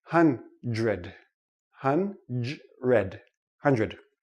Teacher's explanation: doesn't really sound like dr we don't say hunt read ok it's too difficult for the tongue to make the quick switch so this sounds like JR